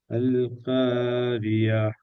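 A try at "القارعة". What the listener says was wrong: காரியான்னு தான் வருது ஐன் வருது இல்லையே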